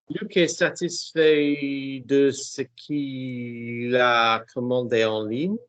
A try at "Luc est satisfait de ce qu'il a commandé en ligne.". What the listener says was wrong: Now that was what you said the first time, and it was faster the first time. So make it faster and keep your teeth together.